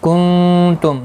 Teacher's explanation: نون ساکن کے بعد حروف اخفا کا تا ہے، اخفا حقیقی ہوگا. میم ساکن کے بعد تا آیا ہے، اظہار شفوی ہوگا.